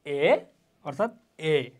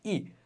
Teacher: তো দুইটা স্বরধ্বনি দুইটি উচ্চারণের দিক থেকে হচ্ছে কি এক শ্রেণীর নয়। এ হলো নিম্ন মধ্য স্বরধ্বনি, ই হলো উচ্চ স্বরধ্বনি